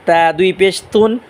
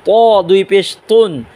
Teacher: তার চিকন আওয়াজে পড়বো আর ত মোটা আওয়াজে পড়বো